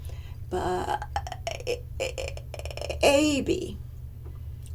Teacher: i simulated vocal fry